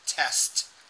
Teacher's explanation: I'm just not getting the T at the end. I'm getting tests, not test.